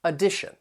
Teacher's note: that first and third syllable you can hear that schwa sound that uh sound the tion is pronounced as shun and the syllable stress comes · The T-I-O-N is pronounced as shun, and the syllable stress comes before it on the second syllable